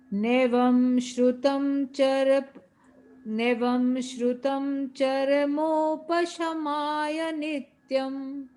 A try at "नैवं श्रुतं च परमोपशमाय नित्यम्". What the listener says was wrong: इसमें आप प शब्द को मिस कर गए। नैवं श्रुतं च, नहीं, च तो इधर पढ़ लिया आपने, फिर परमोप में आपने